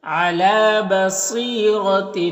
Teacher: صاد حروف مستعلیہ میں سے پر پڑھیں گے · یہاں پر تنوین کے بعد حمزہ ہے تو اظہار حقیقی ہوگا اور انا کے الف کو نہیں پڑھتے ہیں.